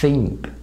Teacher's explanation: ये जो साउंड है ये TH का अनवॉइस्ड साउंड है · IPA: /θ/